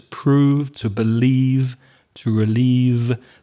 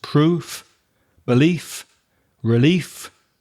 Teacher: I'm exaggerating the f because it's only coming through my teeth. It's only coming from my mouth. That is an unvoiced sound. · that final vv sound has vibration. It's voiced. Whereas the nouns proof, belief, relief, I'm exaggerating the f because it's only coming through my teeth.